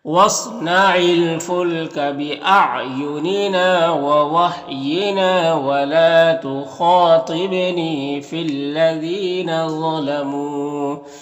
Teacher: یہاں پر نا میں بھی الف مدہ ہے، لا میں بھی الف مدہ ہے، خا میں بھی الف مدہ ہے، ایک الف کے برابر کھینچیں گے یہ سب کو، اور خا حروف مستعلیہ میں سے پر پڑھیں گے، تا بھی حروف مستعلیہ میں سے۔ با میں یہاں پر قلقلہ ہوگا، نی میں یا مدہ ہے، ایک الف کے برابر کھینچیں گے